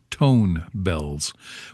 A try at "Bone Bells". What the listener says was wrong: Bone Bell. Bone Bell. No, not tone, bone, like the bones. Bone bells.